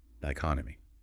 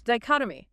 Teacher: Stress on the second syllable. Chot. 4 syllables.